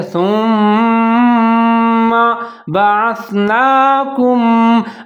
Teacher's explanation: سا کے اوپر پیش ہے، میم مشدد ہے، میم کے اوپر زبر ہے، سا اور میم دونوں ملا کے پڑھیں گے، غنہ کریں گے۔ ثم بعثناکم، با کے اوپر زبر ہے، عین کے اوپر زبر ہے، سا ساکن ہے تو عین اور سا دونوں ملا کے پڑھیں گے۔